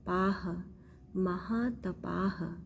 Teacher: आ की मात्रा है और विसर्ग है उसको ह पढ़ते हैं